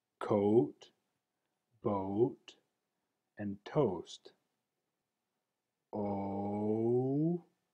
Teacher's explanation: as I round my lips and transition that sound, the tracking ball rises from O to U.